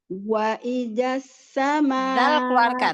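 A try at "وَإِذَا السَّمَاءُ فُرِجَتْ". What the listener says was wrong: Zal keluarkan ujung lidah. Wa idzas sama'u.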